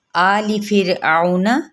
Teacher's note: آلی فرعون، یہاں پہ آپ کھڑے الف مدہ کا قائم مقام، ایک الف یا 2 حرکات کے برابر، لام کی زیر کو لمبا نہیں کریں گے